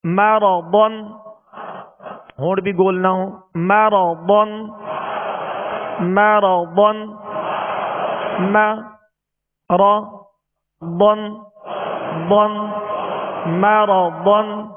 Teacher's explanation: میم زبر ما را زبر را مرا ضاد 2 زبر ضن مرضن مرضن۔ ضاد میں ہونٹوں کو گول نہیں کریں گے، ضاد کو پر پڑھیں گے، را پر زبر ہے، را کو بھی پر پڑھیں گے، اور ضاد کو پر اس لیے پڑھیں گے کہ حروف مستعلیہ میں سے ضاد کو پر پڑھیں گے، یعنی موٹا پڑھیں گے۔